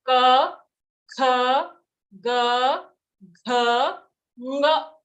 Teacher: all these sounds are in one group because they're being produced by the same part in your mouth, which is your kantha or your throat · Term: ka varga